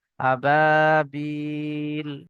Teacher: আবা, বা ইয়াজের বি, ইয়া সাকিনের পূর্বে এখানে জের এসছে, ইয়া মাদ্দা এক আলিফ পরিমাণ টান দিয়ে পড়তে হবে।